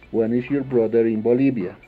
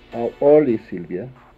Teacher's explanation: La entonación con preguntas de información o preguntas abiertas va a cambiar. Ya no vamos a elevar la última parte como lo hacíamos con las preguntas cerradas. Esta vez vamos a elevar la penúltima antepenúltima parte de la oración.